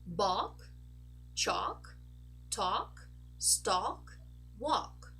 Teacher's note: when we have a word that has a L and it ends in a K, we don't actually say the L as in a dark L or a light L. Not at all.